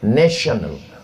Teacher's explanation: Tulisan Tion itu membacanya mesti pakai huruf syin